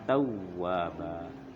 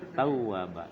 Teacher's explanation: Waw mati itu panjang untuk dhamma. Untuk fathah enggak panjang.